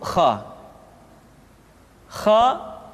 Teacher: adalah huruf ha ha Hi Ho dikeluarkan dari pangkal tenggorokan Khan di pangkal tenggorokan diucapkan dengan mengalir nafas